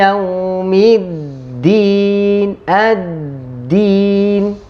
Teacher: Fokus huruf dal bertasydid, bukan biasa. Harus kita tahan dan lebih keras.